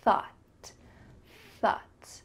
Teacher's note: you need to make sure that your tongue is between your teeth and there's that stream of air coming through